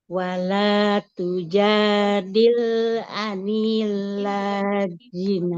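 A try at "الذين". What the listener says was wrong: Lamnya juga nggak panjang. Anil ladzina tidak anil ladzina. Lamnya kan fathah ya, tanpa ada alif di depannya. Maka tidak jadi panjang.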